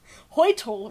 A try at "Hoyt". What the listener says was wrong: It's not Hoytel. It's very close to Hoyt. It's like one syllable.